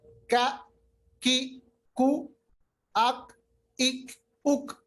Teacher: अगर हम hard plate के साथ मिलाएंगे तो काफ अदा होता है, काफ। और काफ जो है ये पुर हर्फ नहीं है, ये मोटा हर्फ नहीं है, ये कौफ के बरखलाफ है। · जो काफ पढ़ते हैं इस पे कलकला नहीं होता, जबकि कौफ में कलकला होता है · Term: किताब वाला काफ